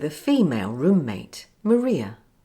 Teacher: I also use the schwa for the article a before the word female as the word female begins with a consonant sound